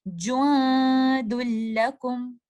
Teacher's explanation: اس letter نون کو ہم completely مرج کر دیں گے لیٹر لام کے اندر، اور اس کی ادائیگی کے وقت آپ کو لیٹر نون کی آواز بالکل بھی نہیں آئے گی اور دال کو آپ لام سے ہی ملا رہے ہوں گے